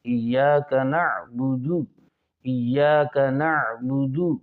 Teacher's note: عین کو درمیان حلق سے نکالیں، وسط حلق سے